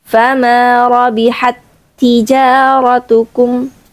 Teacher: Tidak ada hames di situ yang terlihat karena langsung masuk ke ta berikutnya. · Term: idgham mutamatilain